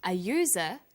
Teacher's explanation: because user sounds like it begins with a y